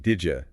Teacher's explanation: did you can often sound like did ya, that soft J sound